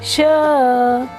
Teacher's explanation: जो जीभ होती है हमारे ऊपर तालू को नहीं जोड़ती, टच नहीं करती, बीच में ही रह जाती है हमारे दोनों मुंह के बीच में।